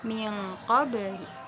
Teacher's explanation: Jadi dibaca samar-samar. Nun mati berjumpa dengan qaf. Qaf itu kan huruf ikhfa, jadi dibaca samar-samar.